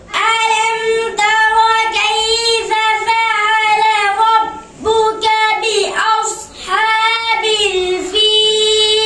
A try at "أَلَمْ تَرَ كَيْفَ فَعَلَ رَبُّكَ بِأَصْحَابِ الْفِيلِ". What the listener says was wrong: কাইফা ফা মিলে গেছে, কাইফা ফাআলা রাব্বুকা, কাইফা ফাআলা রাব্বুকা, ঠিক আছে?